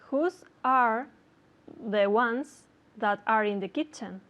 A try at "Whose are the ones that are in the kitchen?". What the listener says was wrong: But was that a question? Did you hear intonation? Because I didn't hear intonation.